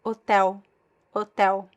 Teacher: So the letters EL is actually, we have actually 2 vowel sounds. So the L is pronounced as a vowel, a weak vowel.